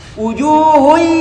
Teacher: Nah sekarang saya baca tanpa dengung walaupun panjang dua harakat